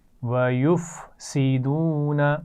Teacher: آپ فا اور سین کی آواز کو ملا رہی ہیں، ملانا نہیں ہے